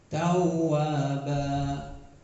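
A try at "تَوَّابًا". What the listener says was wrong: Ditekan lagi. Tawwaba. Ada intonasinya naik. Tawwaba.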